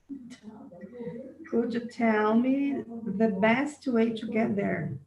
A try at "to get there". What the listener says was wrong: Ainda está falando to. Agora, não é errado falar to, mas nós estamos trabalhando mais para afiar essa pronúncia nativa. To get there.